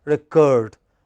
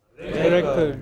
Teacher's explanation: When it is verb, it is the second syllable which is stressed, recurred. But when it is a noun, it is the first syllable which is stressed.